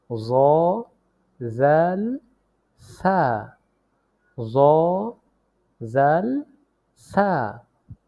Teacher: জিহ্বার আগা সামনের উপরের দুই দাঁতের আগার সঙ্গে লাগিয়ে উচ্চারিত হয় জাল সা জাল সা আবার বলি জিহ্বার আগা সামনে উপরের দাঁতের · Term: 13 নং মাখরাজ